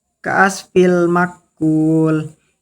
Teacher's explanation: Idkham biguna. Karena tanwin bertemu huruf mim dibaca masuk ke huruf mim dengan dengung.